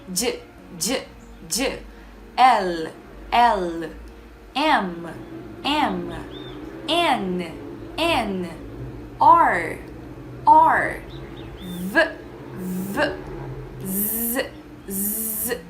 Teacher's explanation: Todos esses fonemas produzem vibrações nas nossas cordas vocais